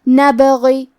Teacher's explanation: کلمت نبغی میں حرف البا پہ جزم ہے لہذا ہمیں با کو قلقلہ سے پڑھنا ہے، اور قلقلہ کا معنی ہے حرف ساکن کو ہلانا، تو ہمیں با کو ہلاتے ہوئے یہ کلمہ کو پڑھنا ہے۔ نبغی، آخری میں حرف الغین ہے، غین کی ادائیگی حلق کے اوپر والی حصے سے ہے، غین حروف التفخیم میں سے ہے تو ہم یہ حرف کو موٹی آواز میں پڑھیں گے، اور کیونکہ اس کے نیچے زیر ہے تو ہمیں غین کو صرف زیر سے پڑھنا ہے۔